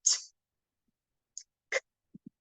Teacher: they are pronouncing them without a voice, so that they're not adding in the schwa sound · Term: unvoiced